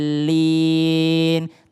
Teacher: panjangnya do itu adalah 6 harokat dan bertemu dengan lam, itu lamnya tasdid dulu.